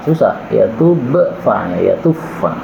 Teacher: Ini ba ketemu fa ini boleh idgham.